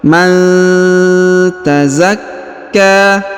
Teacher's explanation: nun sukun bertemu dengan huruf ta, maka kita dengungkan dan kita samarkan. Qad aflaha man, ya, didengungkan dan disamarkan pertemuan antara huruf nun sukun dan huruf ta. · huruf ka ditahan dan ditekan karena berharokat tasdid, lalu dipanjangkan 2 harokat karena di atasnya terdapat tanda alif kecil dan di depannya terdapat alif bengkok atau alif maksurah.